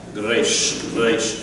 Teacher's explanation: In Hebrew, in Israeli, you roll it from the back of the tongue, so it's almost a G sound. So it's a Reish from the back.